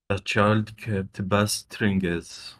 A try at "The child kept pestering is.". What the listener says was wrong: Okay, is it bestering or pestering?